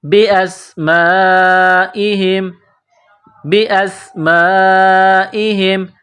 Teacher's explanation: سین کو باریک کرنا ہے، سیٹی کی آواز پیدا کرنی ہے۔